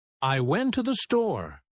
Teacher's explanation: The words to and the become so weak that they almost disappear. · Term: unstressed words